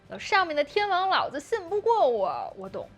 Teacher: the last part 我懂 is drastically lower than the first part. And this is how we stress the key information in the Chinese sentence and express different emotions.